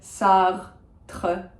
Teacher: If you can do the uvular R, go for it.